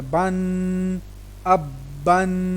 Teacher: میں نے تنوین کے اوپر غنہ کیا کیونکہ تنوین پر ہمیشہ غنہ کیا جائے گا. اکیلی تنوین ہے نا تو اکیلی تنوین پہ غنہ ہوگا.